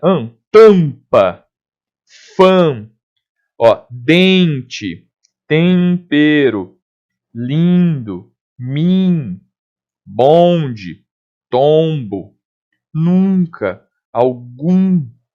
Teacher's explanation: o ar vai sair mais pelo nariz do que pela boca. E é o que a gente chama então de nasal. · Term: vogais nasais